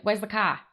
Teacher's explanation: in American dialects like the New York accent, we also have R-lessness.